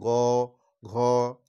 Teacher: গ ঘ এই দুটো বর্ণ যখন তুমি উচ্চারণ করবে, তখন তার গাম্ভীর্যটা কিন্তু একটু বেশি হচ্ছে। গ ঘ, এই যে গাম্ভীর্য যে বেশি হচ্ছে, সেই জন্য এইটাকে বলা হচ্ছে, এই দুটো বর্ণকে বলা হচ্ছে, ওটাকে অনেক সময় ধরে, এইটাকে হচ্ছে ঘোষ। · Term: ঘোষ ধ্বনি